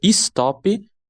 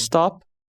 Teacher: Os falantes inserem a vogal I no começo e no fim das sílabas dessas palavras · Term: epêntese vocálica